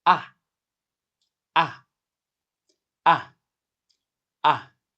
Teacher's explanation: The pitch is falling sharply, like a stern command. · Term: fourth tone